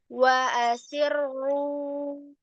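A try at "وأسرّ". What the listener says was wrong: Wa asiru. Langsung angkat, Kak, ketebalannya, Kak. Wa asiru. Siru. Wa asiru. Langsung tebal.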